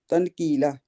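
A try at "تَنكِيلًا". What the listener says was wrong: تنکیلا، وہی اخفا ہے، چھپانا ہے آواز میں، تنکیلا، جو نون ہے نا اس کو تن بالکل نہیں کہنا، تن جیسے ہم پنکھا کہتے ہیں، تن کی بجائے پنگ آپ کہیں تو پنکھا کہتے، پن تو نہیں کہتے یار آپ پنکھے کا، تھوڑا سا چھپاتے ہیں نا ہم۔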